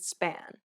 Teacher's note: this p sound is said without aspiration meaning you should not release a burst of air when pronouncing this sound